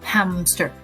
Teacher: We add one more bilabial sound p in order to make it easier to say